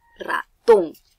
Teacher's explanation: ratón tiene la mayor fuerza de voz en la ton y está tildada. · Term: sílaba tónica